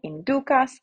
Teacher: The U is long, so the accent goes on the penultimate syllable.